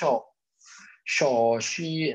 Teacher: Kalau lidah tengah yang naik, jadinya shi.